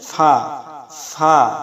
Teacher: নিচের ঠোঁটের পেট সামনের উপরের দুই দাঁতের আগার সঙ্গে লাগাইয়া একটি হরফ উচ্চারিত হয়, সেটা হচ্ছে ফা, ফা।